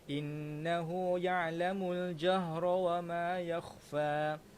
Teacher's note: Dekat nun ini tuan-tuan ada sabdu, jadi kena baca dengan dengung kerana dia adalah wajibul gunnah